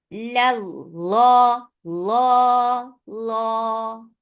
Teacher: And makhraj of lam and noon are very close. So make sure that it should not get the sound of noon. It is lam. La, la.